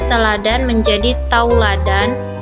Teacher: perubahan dari vokal tunggal ke vokal rangkap ini masih diucapkan dalam satu puncaknya ringan sehingga tetap dalam satu sila Bang contohnya teladan menjadi tauladan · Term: diftongisasi